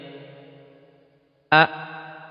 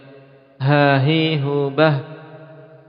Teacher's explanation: Kita ingin tahu ini hamzah, alif, ha, makhrajnya di aqsal halqi.